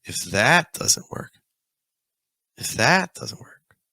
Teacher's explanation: you can hear I'm dragging out that. Also going a little higher in the pitch. Just add some emphasis.